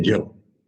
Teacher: बंगाली लोग य का उच्चारण ही नहीं कर पाते, बिल्कुल नहीं। य को कहते हैं ज।